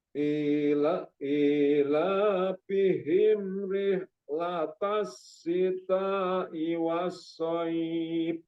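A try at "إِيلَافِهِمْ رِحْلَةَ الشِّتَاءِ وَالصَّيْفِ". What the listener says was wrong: Jadi haknya tadi kurang mengalir, sifat rokhawahnya belum ada ya.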